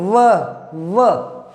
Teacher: एक मात्र ऐसा अक्षर है जो अलग ही बोला जाता है, दांत और होठ से, दंत और ओष्ठ, दंतोष्ठ।